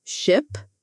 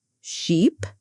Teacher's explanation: Ship has a short I sound and sheep has a long e sound. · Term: minimal pairs